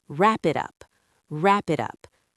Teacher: The P in wrap connects to the I in it.